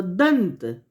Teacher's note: दंत में यहाँ पर अनुस्वार में न का शब्द आ रहा है, मतलब न उच्चारण हो रहा है